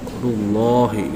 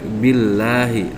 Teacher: Jadi rullahi lebih ke o, rullahi gitu ya. Kalau tarkik billahi lebih ke a. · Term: lam tafkim